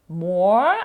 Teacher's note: в нас є довге О бачите там транскрипція дві крапки подовження